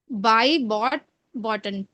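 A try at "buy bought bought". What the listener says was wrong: हाँ बॉटन नहीं, बाय बॉट बॉट।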